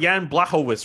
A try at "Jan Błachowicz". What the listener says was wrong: You still have it wrong, actually. It's Jan Błachowicz because it's the L is like a W.